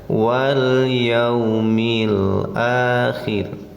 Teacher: Wal, ini namanya alif lam qamariyah. Hukumnya izhar, bacanya jelas, awas jangan tawalud. Jangan wal tapi ditahan saja.